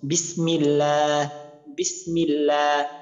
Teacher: আল্লাহ শব্দের আগে যদি জের হয় তাহলে আল্লাহ শব্দের লামকে পাতলা করিয়া পড়তে হয় বা বারিক করিয়া পড়তে হয় যেমন বিসমিল্লাহ বিসমিল্লাহ এখানে লাম লা